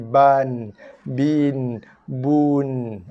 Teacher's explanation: dibaca dengan baris 1 dulu, satu harakat, kemudian barulah kita bunyikan dengan bunyi makhraj sifat nun mati.